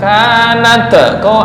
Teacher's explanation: Itu namanya ada pantulan te sedikit, walaupun sedikit. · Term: tawalut